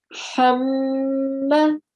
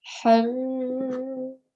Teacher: Because it's one of our GHUNNAH letters. I'm giving a sustained nasal sound.